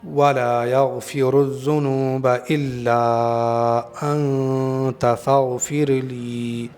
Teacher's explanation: یہاں پر غین ہے، اچھی طرح سے ادا کریں گے، ایسا نہ ہو غلطی سے گاف ادا ہو جائے۔ یہ والا گاف جو ہے ہندی میں ہوتا ہے، اردو میں ہوتا ہے، انگلش میں ہوتا ہے، لیکن یہ گاف عربی میں نہیں ہوتا ہے۔